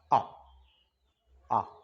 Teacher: अब बोल के भी देखो, आ, आ, मतलब ना पीछे से आवाज आ रही है जीभ के, ना आगे से आ रही है, आपके कहां से आ रही है, मध्य से आ रही है